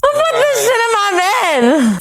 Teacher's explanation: she's lowering the vowel sound in my so it sounds more like ma